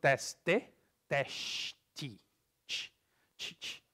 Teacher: So the T becomes ch